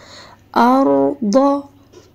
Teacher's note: را سے پہلے اگر زبر آئے تو اس کو اور پر کر کے پڑھتے ہیں، موٹا کر کے